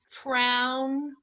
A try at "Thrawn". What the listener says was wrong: You said trown. What are you thinking for AU?